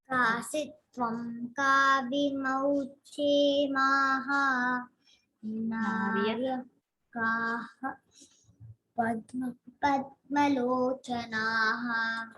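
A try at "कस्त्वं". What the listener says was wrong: say the anuswara. Both of you have not said. you say kasitvam ka.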